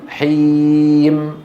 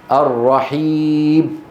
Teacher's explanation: الميم أبرز الأخطاء عند نطقها بتر صوتها عند الوقف عليها حتى تكاد تصير باء